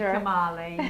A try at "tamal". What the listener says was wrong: Tamal. Yeah, the E is silent. But it's a tamal.